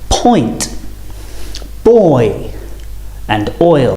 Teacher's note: we're going from the right all the way to the left going from round rounded lips to unrounded starting on the o and finishing on the I or e · going from rounded lips to unrounded